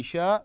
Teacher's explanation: احسنتم اخفاء الحكم هنا اخفاء واما المد في قوله شاء فهو مد احسنتم متصل لاتصال المد والهمز في كلمه واحده وحكمه وجوب المد بمقدار اربع حركات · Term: مد متصل